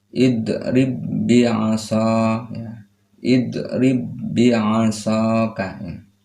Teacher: Makhrajnya berasal dari asyafatain, dua bibir. Sifatnya jahar atau syiddah.